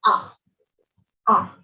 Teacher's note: the A sound found in Ga is made with the jaw open and rounded lips